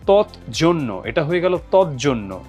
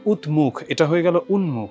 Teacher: তো এটা হচ্ছে আমরা কি বলছি প্রগত সমীভবন পরবর্তী ধ্বনির প্রভাব পরবর্তী ধ্বনির প্রভাবে পূর্ববর্তী ধ্বনির পরিবর্তন যখন হয় সেটাকে আমরা বলছি পরাগত সমীভবন